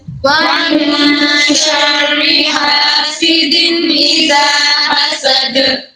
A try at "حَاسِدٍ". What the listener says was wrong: सीन की सीटी वाज़े करें हासिदिन